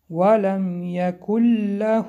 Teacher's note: اینجا قاعده ادغام است. بعد از نون سکون حرف لام آمده است که ادغامی بیغنه می باشد